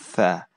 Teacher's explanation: Tha itu tempat keluarnya sama dengan huruf dha tadi ya. Ujung lidah diletakkan antara gigi atas dan bawah. Tetapi tha itu disertai dengan suara udara, hamas ya. Kalau dha tadi tidak ada udaranya.